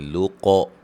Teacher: यख़्लुक़ु, क़ाफ़ को मोटा, खौ को मोटा, वक्फ़न क़ाफ़ पे क़लक़ला करेंगे, लुक़। ठीक है, अफ़ला अलिफ मद्दा है।